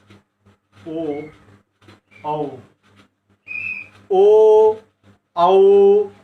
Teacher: ओठांचाही यामध्ये उपयोग होतो आणि कंठाला स्पर्श होऊन ते निर्माण होतात, म्हणून यांना कंठौष्ठ्य वर्ण असंही म्हणतात इथं.